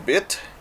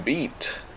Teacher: the short I in bit, and the slightly longer E in beat